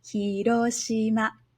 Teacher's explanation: in Hiroshima the hi is a lower-pitch sound and ro shi ma are higher pitch sounds and they stay high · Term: heiban